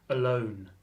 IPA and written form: əˈləʊn (Alone)